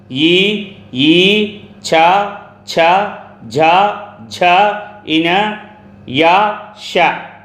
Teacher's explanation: తాలువు అనగా దౌడ భాగంలో పుట్టే అక్షరాలు ఈ, ఈ, ఛ, ఛ, ఝ, ఝ, ఇన, యా, ష తాళవ్యాలు.